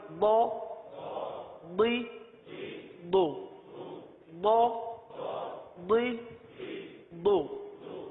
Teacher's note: زبان کی کروٹ اور اوپر کے دانوں کی جڑ سے یہ ادا ہوتا ہے حرف ضاد